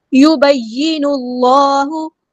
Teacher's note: یبین اللہ، یبین میں دیکھیں یا تشدید والا تو دھیان سے اسٹرنتھ کے ساتھ جماؤ کے ساتھ ادا کریں. نون کو اپنے لام کے ساتھ ملا دینا، حمزۃ الوصل ڈراپ ہو جائے گا